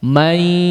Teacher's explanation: May, bukan ya, bukan di hidung semua. Ada kadar suara dari hidung, ada kadar suara dari mulut juga ya. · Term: idgham bi gunnah